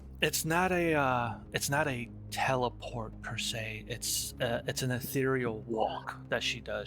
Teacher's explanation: I gotta get a voice for Shazara. I'll just go a little breathy.